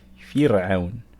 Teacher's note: We're going to pronounce the ra here weak